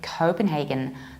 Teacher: Some people, but rather in American accent, would say Copenhagen, stressing the first syllable